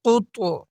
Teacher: اس طا میں اور اس قاف کے اندر قلقلہ کے ساتھ ساتھ ہم موٹا بھی کریں گے کیونکہ حروف مستعلیہ میں سے ہے